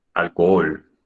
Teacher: No suena la H, es evidente, no tiene sonido alguno.